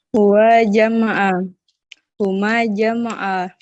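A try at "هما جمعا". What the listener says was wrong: Jama'ah, kasih panjang. Kasih panjang huma jama'ah karena ada alif setelahnya.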